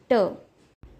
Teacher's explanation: ट व्यंजन में अ का स्वर मिलाया जाए तो ट यह अक्षर बनता है. ट वर्ग के व्यंजन का उच्चारण करते समय हमारी जीभ यानी कि टंग ऊपर तालू को स्पर्श करती है